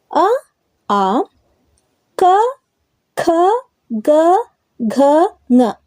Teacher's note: ಇವು ಕಂಠದಲ್ಲಿ ಹುಟ್ಟುತ್ತವೆ ಹಾಗಾಗಿ ಈ ಅಕ್ಷರಗಳು ಕಂಠ್ಯ ಅಕ್ಷರಗಳು ಎಂದು ಕರೆಯಲಾಗುತ್ತದೆ